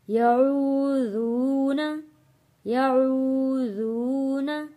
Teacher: ایک ایک الف کے برابر کھینچ کر پڑھیں گے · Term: حروف مدہ